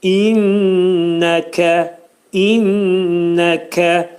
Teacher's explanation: kəf hərfinin məxrəci demək dilin sonu və dilçəyin axırındadır